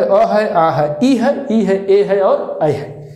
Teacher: जिनका उच्चारण करने में जो ओठ होता है वो बिल्कुल वृत्त के आकार का नहीं ले पाएगा, इसलिए इनको अवृत्तमुखी कहा जाता है।